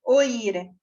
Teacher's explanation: Sin embargo, lleva tilde porque se pronuncia entonces en sílaba distinta la vocal O y la vocal I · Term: hiato